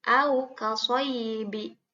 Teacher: ini wawunya sukun, ya, wawunya mati, sebelumnya fathah, maka dibacanya harus pendek.